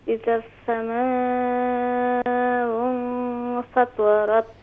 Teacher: سین صفیر کو ادا کریں، صرف صفیر کو، یعنی سیٹی جیسی آواز نکلنی چاہیے۔